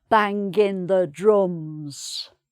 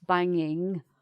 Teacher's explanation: so the hard g sound here and then the g is missed at the end